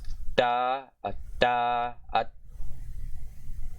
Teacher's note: English aspirates. I try to do it without the aspiration.